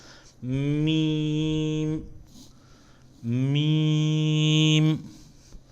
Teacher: میم کو ادا کرتے وقت خشکی والا حصہ جو ہے وہ آپس میں ٹچ ہونا چاہیے ہونٹوں کا